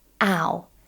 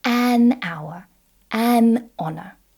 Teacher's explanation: Even though these words start with a consonant, an H, they start with an open vowel sound, ow. So we say an hour, an honor. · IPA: /aʊ/